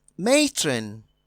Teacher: matron is stressed on the first syllable